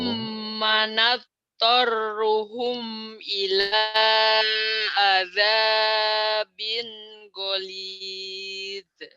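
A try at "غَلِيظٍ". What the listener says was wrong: jangan ada e-nya, hati-hati. Golide. Ah, ini bukan huruf qalqalah. Huruf qalqalah cuma ada 5. Baju di toko. Ba, jim, dal, to, dan kof. Zok bukan. Goliz, goliz, goliz. Numatti'uhum qalila thumma nadtarruhum ila azabin ghalidh. Ghalidh. Gitu jangan ada e-nya ya. Tak boleh ada e karena ini bukan huruf qalqalah.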